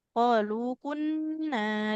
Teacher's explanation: nun fathah ketemu alif panjang dua dua harakat